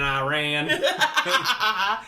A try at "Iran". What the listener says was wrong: Iran. It's an I. It's not an E.